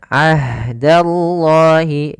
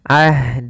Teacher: ha memiliki sifat yaitu jarayan wa an-nafas, mengalirnya nafas kita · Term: ha sukun